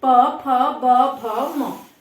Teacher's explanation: देखो होंठ चिपक रहे हैं आपस में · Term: ओष्ठ